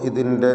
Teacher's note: ഈ ദീർഘത്തിൻ്റെ പേര് മദ്ദുൽ ബദൽ എന്നാണ്. എന്നാൽ നമ്മുടെ റിവായത്ത് പ്രകാരം 2 ഹറക്കത്തിൻ്റെ അളവിൽ മാത്രമാണ് ദീർഘം, തബീഇയ്യ ദീർഘം.